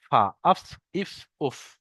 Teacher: 17 নম্বর মাখরাজ ফা। ফা, নিচের ঠোঁটের ভিজে অংশ এবং সামনের উপরের দুই দাঁতের আগার সাথে লাগিয়ে উচ্চারিত হয় ফা